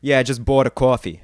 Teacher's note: they're raising that vowel in coffee and they're moving it more towards the center of their mouth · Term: thought vowel